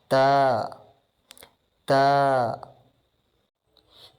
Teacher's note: تا لیٹر زبان کی نوک جب اوپر والے سامنے کے 2 دانتوں کی جڑوں کے ساتھ ٹچ کرے تو وہاں سے تا ادا ہوتا ہے